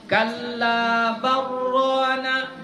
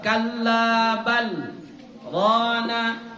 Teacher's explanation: Karena lam dengan ra apabila dia berjumpa maka dia diidghamkan. Hukum idghamnya namanya idgham mutaqarib, ya.